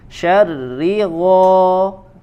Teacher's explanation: huruf ra nya dibaca tipis